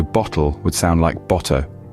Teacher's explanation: For example, car would be pronounced as car, and far would be pronounced as far. Also, the L at the end of words is often pronounced as a W or O